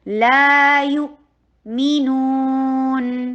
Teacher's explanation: الف ساکنہ قبلہ مفتوح، الف ساکن آ گیا ہے اور اس سے پہلے والے حرف یعنی لام کے اوپر زبر آ گئی ہے، تو اس لیے ہم اس کو 2 حرکہ لانگ کریں گے